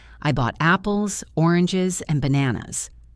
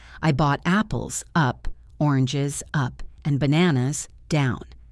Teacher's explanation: When you are listing things, you need to signal to the listener that you are not finished yet. You do this by raising your voice on every item except the last one. On the last one, you drop your voice to show the list is complete. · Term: list intonation